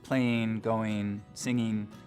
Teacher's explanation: one of the things we start to hear in the Mountain West generally is ing endings pronounced as een, so playing, going, singing, the whole western part of the country.